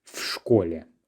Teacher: whenever we have prepositions composed of just one letter, in Russian we just make the whole thing flow. We don't separate v and школе. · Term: flows